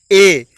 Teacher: ए तो कंठ और तालु से आवाज आ रही है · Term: कंठ तालु